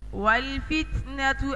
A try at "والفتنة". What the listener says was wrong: والفت. لا. انت دنتا فريكاتيف. فت. فت.